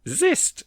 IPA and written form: zɪst (Xyst)